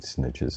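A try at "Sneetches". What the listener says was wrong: Sneeches. Not snitches. Sneeches. Two E's.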